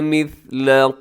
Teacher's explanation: مثل اس میں سیٹی نہیں ہے، ثا ہے